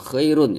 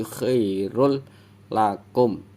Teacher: langsung masuk ke huruf lam Dan ini juga tanwin bertemu lam tanwin ketika bertemu dengan huruf lam jadi suara tanwinnya itu hilang ketika hilang berarti nggak dibaca Khairul Khoirul bukan Khairun ya tapi